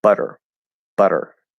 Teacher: in american english it's spelled with two t's but it's just a flap d okay it becomes a flap d um because we have all · so we're flapping and going to er